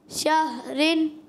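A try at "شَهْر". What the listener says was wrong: شہر. را کی آواز بھی آئے.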